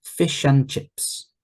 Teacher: we don't say fish and chips so the D disappears it's alighted fish and chips and chips fish